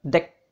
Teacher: huruf E-nya ini bukan terbuka melainkan tertutup, pendek. Nah, suku kata pertama pen, suku kata kedua dek, maka dua-duanya ditutup, sedangkan yang atas ini terbuka.